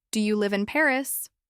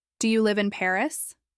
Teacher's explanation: These questions are very common, and here's the key thing: the intonation typically rises at the end. That upward tone signals that you're asking something and expecting a yes or no answer.